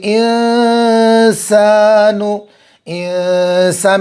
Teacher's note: تو نون ساکن کی آواز کو ناک میں چھپائیں گے، ایک الف کے برابر گننا کریں گے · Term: اخفاء حقیقی